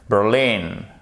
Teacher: Accent tonique sur la seconde syllabe.